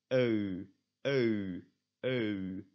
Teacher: You start at O, and you go to U. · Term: diphthongs